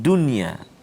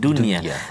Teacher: Sebelum ni kita belajar idgham ma'lunah tapi bila satu kalimah bertemu dalam satu kalimah, dia tak ada idgham ma'lunah tu, dia jadi izhar mutlak. Mana kita kena jelaskan dunia, tak boleh dengung kat situ, jelaskan bacaan kita.